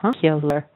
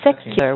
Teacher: stressed on se and 2 weak syllables, and it has a little ya in it